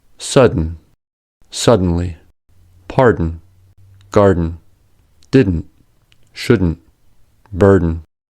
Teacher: Syllabic un. The syllabic un is common and typically occurs in an unstressed syllable immediately following the alveolar consonants